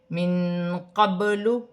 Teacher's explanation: نون ساکن میں اخفا ہوگا، با ساکن ہے، حروف قلقلہ میں سے ہے، قلقلہ کے ساتھ ادا کیا جائے گا